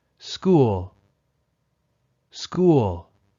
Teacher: School has one syllable so the falling intonation happens smoothly